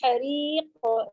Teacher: ہاں پہ زور دیں گی، حریق. ری بالکل باریک، قاف پہ قلقلہ، قلقلہ ہیوی ہوگا کیونکہ قاف ہیوی لیٹر ہے